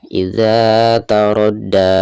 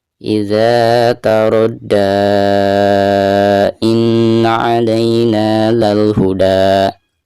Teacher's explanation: jika diwasolkan ke bacaan inna, maka di sini dipanjangkan 5 harokat karena dihukumi mad jaiz munfasil, seperti itu.